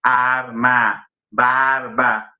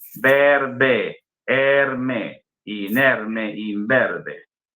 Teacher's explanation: En la vocal cambia de timbre. Pasa de ser una vocal abierta a arma, barba, a una vocal un poco más cerrada, cierra un grado. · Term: vocalismo